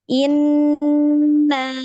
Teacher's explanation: Dengung ya, nun bertasdid, dengungnya coba dipanjangkan lagi ya.